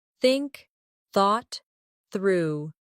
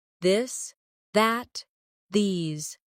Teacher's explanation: Put your tongue between your teeth and push air out for think. For this, your tongue touches the same position, but with your voice turned on.